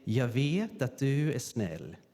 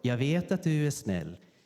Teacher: So you take away the G, the T jumps over, and the T and D merge. And then you take away the R.